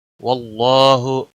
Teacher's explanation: इसमें जलाला का लाम और उसके पीछे हरफ के ऊपर ज़बर है, इसलिए मोटा पढ़ा जाएगा। इसमें जलाला का लाम, इसके ऊपर मद्दे असली भी है, खड़ी ज़बर, एक अलिफ के बराबर खींच कर पढ़ेंगे।